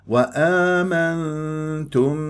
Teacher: لا تذهب بالنون الساكنه الى مخرج النون اللساني فيصير اظهار لازم تروح الى مخرج التاء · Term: اخفاء